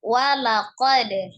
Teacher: Ada qalqalah ketika sukun, teman-temannya adalah ba, jim, po dengan kof ya, termasuk huruf dal ketika disukunkan maka dipantulkan